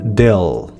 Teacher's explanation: le bout de la langue revient en contact de la crête alvéolaire et le reste de la langue se soulève pour faire le son L